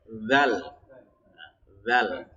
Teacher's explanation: Adapun kalau zal itu ujung lidahnya keluar seperti kayak digigit